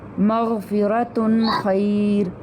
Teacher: ہم نے وہاں پر نون جو آ رہا ہے تنوین میں اس کو ظاہر کر دینا ہے